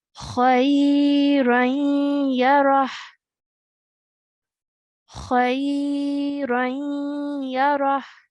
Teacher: The ya remains as it is, and we make a half nasal sound as we join